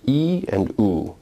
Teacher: U as you can clearly see and feel is a rounded vowel whereas e is not a rounded vowel. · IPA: [ i ] vs. [ u ]